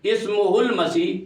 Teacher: اشباع ضمیر ختم ہو جائے گا، جو لمبا کرنا ہے ہو کو وہ ختم ہو جائے